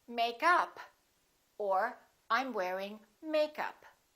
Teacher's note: if it's a noun, we stress the first part.